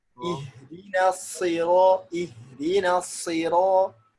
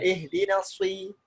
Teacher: Cuman kalau persis seperti orang bersiul, nah itu kurang apa. Shot ini kayak sin, cuman lidah belakang dia naik.